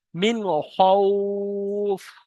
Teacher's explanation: মিন বলে গুণনা করা যাবে না, হরফে হালকি 6টির মধ্যে খয়েস, তাই বিনা গুণনা পড়তে হবে মিন।